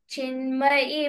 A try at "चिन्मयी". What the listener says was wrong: Chinmayi is E should be long. Chinmayi.